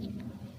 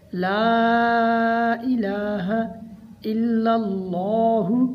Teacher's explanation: اللہ تعالیٰ کے نام کو موٹا پڑھیں گے کیونکہ اللہ تعالیٰ کے نام سے پہلے لام کے اوپر فتح ہے۔ پہلے لام کو ملائیں گے تو باریک پڑھا جائے گا، دوسری بار اللہ والا لام موٹا پڑھا جائے گا۔